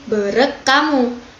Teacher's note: bunyi eng dan h ini dalam kata bereng hamu selanjutnya akan mengalami perubahan menjadi k, sehingga penggabungan katanya menjadi berek kamu. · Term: asimilasi resiprokal